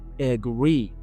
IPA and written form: əˈɡriː (agree)